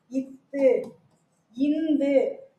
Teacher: இத்து இந்து ஆகிய இரு மெய்களும் மேல்வாய் பல்லின் அடியை நாக்கின் நுனி பொருந்துவதால் பிறக்கிறது